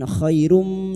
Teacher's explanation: Khai fathah bertemu ya sukun kita lunakkan huruf lin.